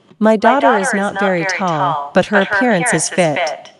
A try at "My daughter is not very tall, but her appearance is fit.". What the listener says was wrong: The appearance này nó cũng có chữ s ở cuối đấy. Đọc nó cẩn thận.